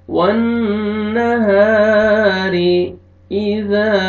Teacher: वन्नहारी, अलिफ मद्दा, अलिफ से पहले ज़बर, हा को आपने खींचना है, रॉ के नीचे ज़ेर है, रॉ को बारीक करके पढ़ेंगे।